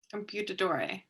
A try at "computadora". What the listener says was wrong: Computadora with an A.